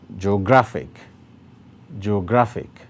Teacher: Now, this one has three syllables as well. And the place with the greater emphasis is on gra.